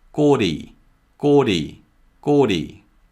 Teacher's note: So it's gori, gori. And because lir is positioned between two vowels, o and e, it's pronounced more like an R sound.